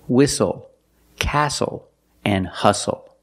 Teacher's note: the t is silent with the spelling pattern s-t-l-e